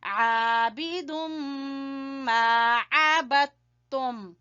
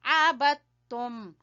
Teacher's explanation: یہاں پہ دال جو ہے وہ تا میں داخل ہو گیا ہے، اس لیے عبدتم، تا کی آواز آئے گی